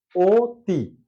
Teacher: অতি লেখা আছে অতি কিন্তু আমরা সাধারণত উচ্চারণ করে থাকি ও তি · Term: সংবৃত